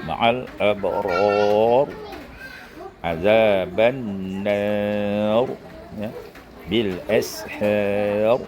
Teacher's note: ra' terletak ujung, tapi sebelum ra' itu ada alif, maka dia dibaca tebal